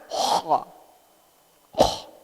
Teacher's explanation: Ternyata kha itu adanya di ujung tenggorokan.